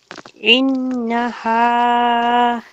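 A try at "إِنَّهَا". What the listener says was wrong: মাশাআল্লাহ, এত সুন্দর।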